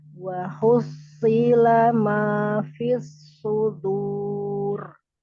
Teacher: Rok sukun karena waqaf. Roknya disukunkan karena waqaf. Sebelumnya sukun, sebelumnya lagi dhammah. Tebalkan. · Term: Roknya tafhimkan